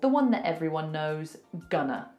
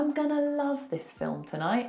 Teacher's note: instead of going to we say gunner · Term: contractions